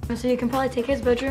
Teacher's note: you can even hear one of those reduced /sə yə/, or even /syə/, because it's such a high frequency word